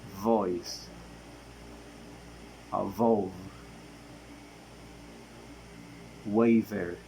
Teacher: The next one we have it is according of voice the sound is voiced. According of the place of articulation it is labiodental. According of manner of articulation it is fricative.